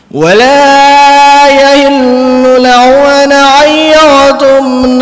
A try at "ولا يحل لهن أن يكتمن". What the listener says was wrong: Itu haknya harus jelas. Wala yahillu lahun gitu. Haknya biar jelas.